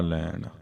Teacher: ਤੂੰ ਆਇਆ ਲਾਹਾ ਲੈਣ। ਲੈਣ ਦੇ ਨਾਣੇ ਨੂੰ ਸਿਹਾਰੀ ਹੈ, ਕਿਰਿਆ ਦਾ ਸਰੂਪ ਹੈ, ਇਸ ਲਈ ਸਿਹਾਰੀ ਦੀ ਜਿਹੜੀ ਸਾਊਂਡ ਹੈ, ਧੁਨੀ ਹੈ, ਇੱਥੇ ਸਾਈਲੈਂਟ ਰਹੇਗੀ